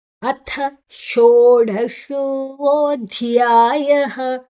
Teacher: ಧಿಯಾಯ ಧ್ ಮಹಾಪ್ರಾಣ. ಧ್ ಮತ್ತೆ ಯಾ ದೀರ್ಘಾಕ್ಷರ, ಯಾದ ನಂತರ ವಿಸರ್ಗದ ಉಚ್ಚಾರಣೆ ಹ